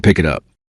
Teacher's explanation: The final K in pick connects the vowel at the beginning of it. Then the final T in it connects to the vowel at the beginning of up. Your ear may hear something like one unfamiliar word, pick it up, but the speaker is simply saying pick it up.